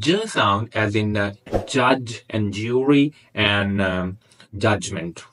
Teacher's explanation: So Ch and J are the affricates there in manner of articulation and palatal or post-alveolar again in the place of articulation.